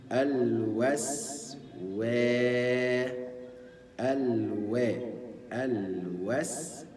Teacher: الف مد تمد بمقدار ثانيتين او حركتين مدا طبيعيا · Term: ألف مد